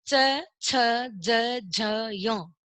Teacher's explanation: इसमें हमारी जो जीभ है वो हमारे ऊपर तालु पे स्पर्श कर रही है, इसलिए इसको बोल दिया तालु और इसका नाम दे दिया तालव्य।